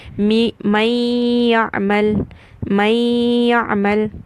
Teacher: So in incomplete merging, what happens is when I am merging, I cannot hear the sound of noon, but I can hear a gunna.